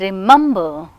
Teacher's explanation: And remember, so the second syllable remember, mem is receiving stress. Though we have 3 syllables, the second one is emphasized, it is receiving the prominence.